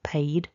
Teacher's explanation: So we've got paid with that duh for the past simple and past participle, paid. So we need to have a vibration in the throat there for the duh